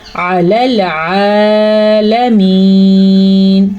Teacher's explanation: یہ یا مدہ ہے تو یا مدہ کو خوبصورتی کے ساتھ ادا کرنا ہے کھینچ کے